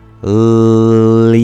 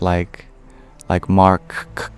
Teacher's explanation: it's made up of only vowels and approximants. So there's no actual clear stop in the flow of the name. There's no plosive sound.